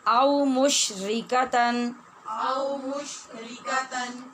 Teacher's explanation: او مشرکا نہیں، ری را باریک ہے